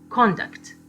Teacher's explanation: We have the stress on the first syllable